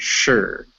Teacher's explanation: It's similar to shore, but the vowel is much shorter.